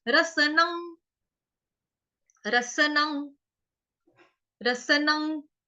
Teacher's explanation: यहाँ पे क्या है, रस न रसन। उसके ऊपर जो अनुस्वार यानी कि बिंदी है, उसका उच्चारण करेंगे गंगा वाले ग से